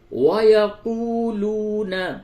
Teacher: وَيَقُولُونَ واو اور یہ دوسرا واو دونوں مدہ ہے، دونوں کو کھینچ کر کے پڑھیں گے